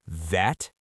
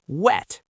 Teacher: The V sound is labiodental. That means your top teeth must touch your bottom lip. It vibrates, v, v, like a vibrating phone. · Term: V and W